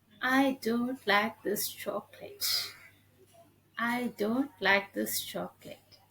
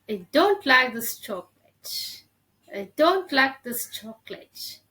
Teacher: so i'm just giving stress on the word don't